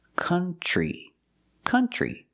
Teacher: country we don't use the uh sound like foot and book we use the uh sound like cup and up and cut this is a relaxed sound